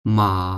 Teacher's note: আর third টোনটা হবে আ মাঝের থেকে এসে নিচের দিকে আসবে এবং তারপর উপরের দিকে চলে যাবে। যেমন মা। দেখেন, দেখেন এই টোনগুলোর কারণে কিন্তু প্রত্যেকটা শব্দের অর্থ পরিবর্তন হয়ে যায়।